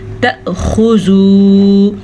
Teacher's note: حمزہ ساکن کی آواز ہلکے سے جھٹکے کی ہوتی ہے